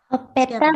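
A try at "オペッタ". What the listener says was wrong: Hop peta. Ditahan ya. Tidak hopeta, tidak, tapi hop peta. Hop peta. Ini bunyi sokwong. Konsonan ganda. Hop peta di tasdid.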